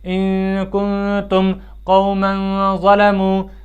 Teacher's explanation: اخفا کے ساتھ، یعنی خیشوم میں آواز لے جا کر پڑھنا ہے